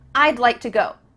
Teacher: we're cutting off all the sounds in the word would except for that final D